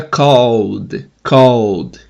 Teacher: Então, quando termina vozeado, você tem que pronunciar o ED como D. O E não é pronunciado, então esse ED vira só o som do D.